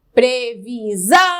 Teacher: sílaba tônica é a última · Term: oxítona